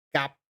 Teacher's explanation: you swallow your p the p sound you barely hear it